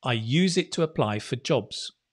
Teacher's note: Emphasize that apply and jobs.